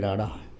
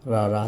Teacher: ਰੜੇ ਨੂੰ ਫਲੈਪ ਜਾਂ ਫੜਕਵਾਂ ਤੇ ਰਰੇ ਨੂੰ ਟਰਿੱਲ ਜਾਂ ਕੰਬਵਾਂ ਕਿਹਾ ਜਾਂਦਾ